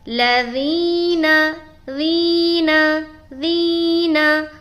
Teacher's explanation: ذال کو جو نرمی کے ساتھ ادا کرتے ہیں تو اس میں سیٹی والی آواز پیدا نہیں ہونی چاہیے. اگر سیٹی والی آواز پیدا ہو رہی ہے تو گویا کہ آپ کا حرف چینج ہو گیا.